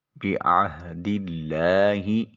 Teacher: و او فو بعہد اللہ، عین کو وسط حلق سے نکالیں، ہاں کو اقصی حلق سے ادا کریں۔